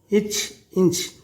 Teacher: இச், இஞ்ச் ஆகிய இரு மெய்களும் நாவின் இடைப்பகுதி நடு அன்னத்தின் இடைப்பகுதியும் பொருந்துவதால் பிறக்கின்றன.